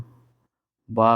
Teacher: फिर है हमारा वा का उच्चारण स्थान दंतोष्ठ होता है